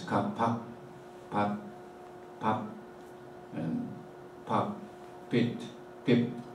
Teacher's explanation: these are monosyllable words, all ending in a voiceless plosive sound